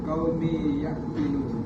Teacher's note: ada idgham maal ghunnah sebab tanwin bertemu huruf ya dibaca dengan dua harakat